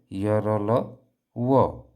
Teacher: अंतस्थ व्यंजन में जीभ कोई हरकत नहीं करती है और हम उस व्यंजन को बोल भी लेते हैं।